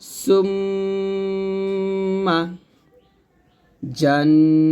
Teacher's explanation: অর্থাৎ ওয়াজিব গুন্নাটা নাকের ভিতর থেকে আমরা গুনগুন শব্দ করে গুণনা করি। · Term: ওয়াজিব গুন্না